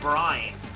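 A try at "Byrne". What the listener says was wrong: No, the Y comes before the R.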